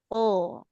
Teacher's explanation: Jadi huruf qof itu kan huruf tebal memang vokalnya kayak ke O ya.